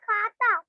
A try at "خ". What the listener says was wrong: ہاں با خوتا, کھاتا نہیں, خا موٹا پڑھنا, با خوتا. ورنہ کھا بن جائے گا وہ.